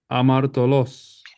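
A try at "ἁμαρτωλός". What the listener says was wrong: Espíritu rudo, jamartolo.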